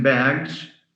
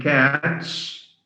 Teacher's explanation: It's pronounced as Z, as in bags, S as in cats, and is as in buses or clashes. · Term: plural morpheme S